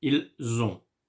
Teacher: I don't say ils, no, I say il. But since the verb that come next to it starts with a vowel, I have to make the liaison. So I say ils ont with the sound z.